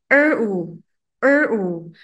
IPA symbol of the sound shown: əʊ